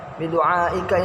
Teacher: termasuk hukum bacaan mat wajib muttasil dengan panjang 2,5 alif atau 5 harokat dengan alasan mat asli bertemu dengan huruf hamzah dalam satu kalimat.